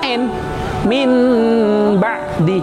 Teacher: Jadi berubah bentuknya, n berubah menjadi m. Itu namanya iqlab.